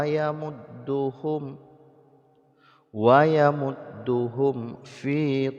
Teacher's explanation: Maka ini hukumnya syiddatul izhar, sangat-sangat diizharkan ya, tidak boleh didengungkan. Dibaca mim sukunnya dengan jelas tanpa didengungkan. Jadi mim sukun itu bertemu dengan waw dan fa, hanya 2 huruf ini yang harus diizharkan dengan bersangatan.